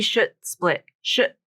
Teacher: So I hear a T sound there. I don't hear a D.